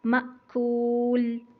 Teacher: جھٹکا لگا کے میم کے زبر کو روکیں گے